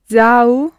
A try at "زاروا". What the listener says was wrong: Yes, there's the r in there.